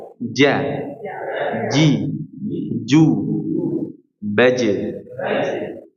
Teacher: tidak ada aliran nafasnya pada huruf jim · Huruf jim jangan sampai ada suara huruf C.